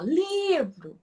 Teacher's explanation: Percebam que o li eu falo com mais extensão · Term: paroxítona